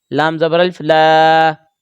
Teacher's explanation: لام کے ساتھ الف ہے تو ایک الف کا برابر کھینچیں گے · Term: الف مدہ